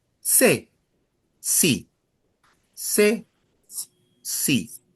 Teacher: In Latin America, that CE or CI, you'll associate that as the same sound.